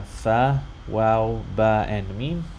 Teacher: the 4 lip letters whose primary articulation point is lip, or the lips